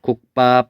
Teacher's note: 음절의 끝소리 기역, 디귿, 비읍 뒤에서 기역, 디귿, 비읍, 시옷, 지읒이 된소리로 바뀐다